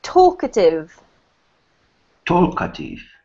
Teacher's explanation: the emphasis on the word Talk